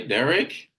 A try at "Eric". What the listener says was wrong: It's with an E.